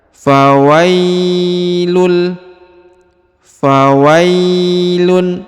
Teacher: huruf tanwin harokat un bertemu dengan huruf lam bertasdid, maka dia melebur dan menghilang huruf tanwinnya ini serta ditahan dan ditekan ya pada huruf lam.